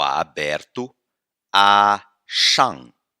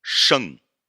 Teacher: Uma coisa é o A aberto, A, shang. Outra coisa é o E do chinês, que é mais fechado, sheng. O nosso sotaque transforma esses dois fonemas em um só, e aí já era, vai dar problema mesmo.